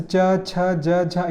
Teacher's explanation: च वर्ग का उच्चारण जैसे च, छ, ज, झ, या इन सब का उच्चारण तालु से होता है। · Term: तालव्य वर्ण